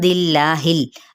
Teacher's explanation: इसमें जलाला बारीक क्योंकि पीछे ज़ेर आ रहा है, ज़ेर की सूरत में हमने बारीक पढ़ना होता है।